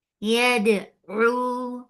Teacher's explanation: Ain from your throat for dhamma circular, make it two counts long.